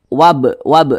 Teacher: karena dia Qalqalah maka b-nya itu dipantulkan wab wab manantul seperti itu dan dia termasuk kepada Qalqalah Qalqalah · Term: Qalqalah sugro